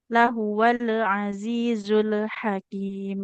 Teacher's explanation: hati-hati di pengucapan lam sukunnya. Pastikan tidak memantul ya.